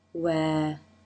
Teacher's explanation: lips begin in a tight circle for the w